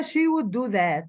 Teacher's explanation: Stress on the word would indicates criticism and disapproval of typical behavior in the past.